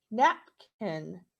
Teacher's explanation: my voice went higher napkin and then it dropped down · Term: accent mark